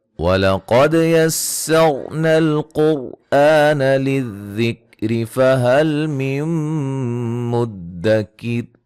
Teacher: قاف کو موٹا، دال پہ قلقلہ، را کو موٹا ادا کریں گے